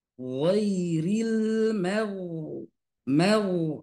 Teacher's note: Contoh, misalkan di dalam surah Al-Fatihah, ketika gha itu tebal, iya-nya tipis, ghairi tipis, ghairil, lamnya tipis, maknya tipis, ghainya tebal